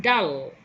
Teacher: a tree term label there le is a voiced alveolar lateral lateral because the air goes out to the sides of the tongue